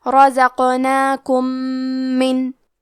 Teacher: رزقناکم آخری میں میم ساکن ہے، پھر حرف المیم آتا ہے کلمت من، یہاں حکم ہے ادغام متماثلین صغیر، ہم میم ساکن کو دوسرے میم میں ملا کے ایک ہی میم غنہ اور تشدید کے ساتھ پڑھیں گے